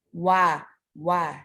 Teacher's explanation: keadaan Fatah tapi membulat itu adalah huruf wawu satu-satunya huruf yang dalam keadaan berharokat fathah yang membulatkan bibir adalah Wow